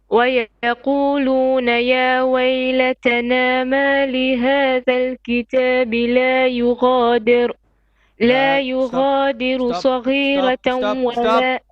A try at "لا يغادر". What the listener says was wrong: لا يغادر. Ra will be flat here because of the kasra before it. You said لا يغادر with heavy.